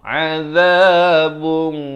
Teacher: A di pertengahan kerongkong. Azabun. Di sini ikhfa, disamarkan 2 harakat dengan tebal.